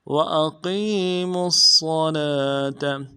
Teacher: صاد کے اوپر تشدید ہے، زور دیں گے، آگے لام کے اوپر کھڑا زبر ہے، ایک اندار میں کھینچیں گے، تا کو نرم سے ادا کریں گے۔